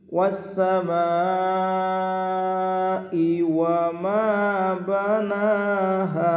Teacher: মা চার আলিফ লম্বা হবে, মধ্যে মুত্তাসিল।